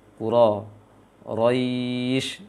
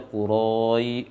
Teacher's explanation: ya sukunnya tidak boleh dibulatkan bibirnya ketika baca ya sukunnya setelah ro